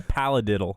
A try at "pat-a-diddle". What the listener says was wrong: Pat-a-diddle. No, you're you're saying L's. You're saying L's. It's pat-a-diddle.